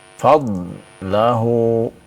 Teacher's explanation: Ini juga huruf dod bukan huruf qalqalah ya. Jadi jangan diqalqalahkan ya. · Nah, itu berarti qalqalah ya. Nah, sifat dari dhad yaitu ya istitalah, maka ditahan. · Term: huruf dhad